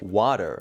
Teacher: For example, the word water is pronounced like water. As you can hear, the T sound is almost substituted with a D sound. · T, in addition to a few other sharp consonants, is softened by the American accent.